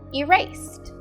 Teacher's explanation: This means the word erase ends in a final unvoiced sound. So when we add the ed ending to make the word past tense, it would make a final t sound.